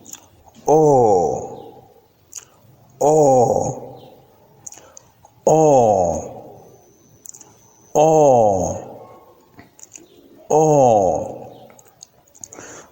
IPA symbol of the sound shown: ɔː